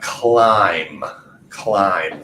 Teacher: with a B remember that b is silent there so climb last thing I hear is that M sound that's definitely with a vibration